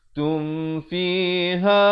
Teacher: Tum fiha, izhar syafawi. Jangan dipanjangkan.